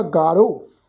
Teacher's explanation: ਤਾਂ ਇਸ ਸ਼ਬਦ ਦਾ ਪਾਠ ਉਚਾਰਨ ਕਰਾਂਗੇ ਜੀ ਗਾਰੋ। ਹਾਹਾ ਅੱਖਰ ਜਿਹੜਾ ਹੈ ਉਹ ਰਾਰੇ ਅੱਖਰ ਦੇ ਨਾਲ ਮਿਲਵੀ ਟੋਨ ਦੇ ਵਿੱਚ ਉਚਾਰਨ ਹੋਏਗਾ